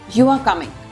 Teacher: A flat tone makes it sound like a statement.